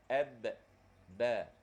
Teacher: Huruf ba ni bibir dirapatkan. Ab, ba. Dia bukan huruf lidah, dia huruf bibir.